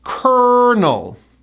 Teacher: We pronounce this word as kernel, 2 syllables. First syllable gets the stress.